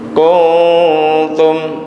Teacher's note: Nun matinya gunanya dekat ke huruf ta. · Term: ikhfa